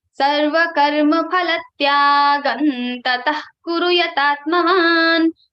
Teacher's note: So the anuswara sound will be like na.